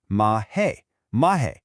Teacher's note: Now, it looks like an H, but most of the time it doesn't sound like one. Instead, it just makes a short a or e sound